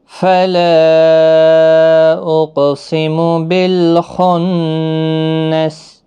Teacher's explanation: فلا یہاں پر مد منفصل ہے، الف مدہ کے بعد حمزہ بشکل الف ہے، چھوٹی مد 3 الف کی مقدار کے برابر کھینچ کر پڑھیں گے. قاف حروف مستعلیہ کا حرف ہے، پر بھی پڑھنا ہے، ساکن بھی ہے، اس پر قلقلہ بھی ہوگا. اقسم بالخنس خا حروف مستعلیہ کا حرف ہے، پر پڑھنا ہے، نون مشدد پر غنہ ہوگا اور سین ساکن ہو جائے گا وقف کی صورت میں.